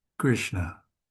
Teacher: the retroflex or cerebral nasal sound